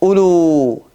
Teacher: Биринчи вау окулбады, себеби анын үстүндө кичинекей сүкүн турат. Ал эми экинчи вауду окуйбуз, себеби ал созулма мат, ал окулат.